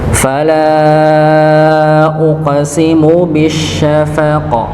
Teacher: qafnya dipantulkan ya, karena dia ada salah satu di antara huruf yang memantul